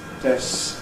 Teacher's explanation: /des(k)s/ sometimes sounds as if the /k/ is entirely gone